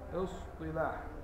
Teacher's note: الصاد مفخمة ومستعلية ومطبقة والتاء مستفلة